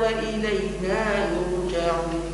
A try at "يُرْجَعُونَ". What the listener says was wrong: دي مع القصر مش لازم التوسط، ما عنديش نفس، القصر موجود. يرجعون لازم أقول يرجعون، هم ما عنديش نفس، خلي على القصر.